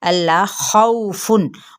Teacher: वाव लीन का कायदा है और खौ हुरूफ मुस्तालिया में से यानी मोटा करके पढ़ेंगे